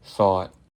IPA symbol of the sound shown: θɔt